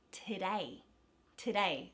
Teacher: that first syllable because it's not the emphasized syllable it becomes a schwa and a is the emphasized syllable today the the australian schwa